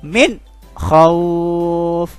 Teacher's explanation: bunyi n sukunnya atau bunyi nnya harus jelas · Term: izhar